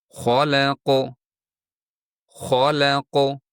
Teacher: Aslida ho qof harflari yug'on, ammo lam esa ingichga talaffuz qilinishi kerak edi.